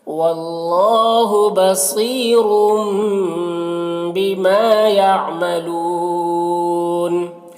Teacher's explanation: لو میں یہاں پر واو مدہ ہے اور نون کا زبر سکون سے بدل جائے گا، وقفی کی صورت میں تو مد عارض وقفی ہوگا